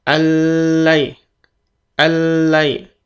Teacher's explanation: Al langsung masuk lan di sini. Al ditahan tasydid tapi tidak 2-3 ketukan al, hanya tasydid saja. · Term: idgham tanpa gunnah